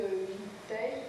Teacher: le E caduc, il est à peine prononcé, il est souvent mis entre parenthèses quand il est en fin de mot, hein, il n'est normalement pas prononcé, sauf accent du midi, du sud-ouest de la France.